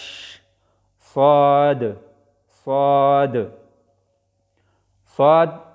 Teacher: صاد کې دا ده چې د دې اداګۍ په وخت کې د ژبې دا رستنی حصه دا بره تالو سره اوچتیږي، د هغې د وجې نه دا پر ادا کیږي، غټ ویلی شي.